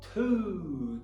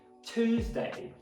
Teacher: Então no americano, to, no britânico, chu.